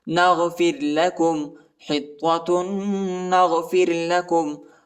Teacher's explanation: را کے پہلے جو ہے فا پر زیر آیا ہے اس لیے یہ نرم پڑھا جاتا ہے، باریک پڑھا جاتا ہے